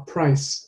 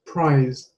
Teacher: the vowel sound before is shortened when the consonant is unvoiced so for example price the eye is a little bit shorter than the prize eye